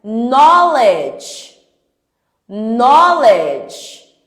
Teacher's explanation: Então, de novo, quando o K tá tem depois do K tem uma consoante, o meu K não tem som, é uma letra silenciosa